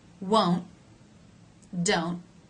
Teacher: They both have the O as in no diphthong.